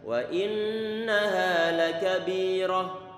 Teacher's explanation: Kita tahan lagi, jangan lupa untuk nun bertasydid dia baca gunnah yang paling sempurna, paling lama penahanan suara dengannya